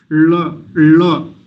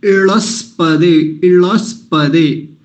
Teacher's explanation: तो इसका उच्चारण जो होता है, जैसे लकार का उच्चारण मूर्धा से किया जाए, ल का उच्चारण मूर्धा से ऊपर अपने जीभ को मूर्धा में ले जाते हैं, जहाँ से ट ठ ड ढ बोला जाता है वहीं से ल बोलेंगे तो क्या उच्चारण आएगा, ल।